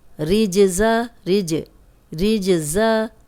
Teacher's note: जीम कलकला है, जीम पे जज़म आ गया, हिला के पढ़ रहे हैं।